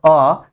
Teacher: অ এবং আ এর উচ্চারণ স্থান হচ্ছে কণ্ঠ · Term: কণ্ঠস্বর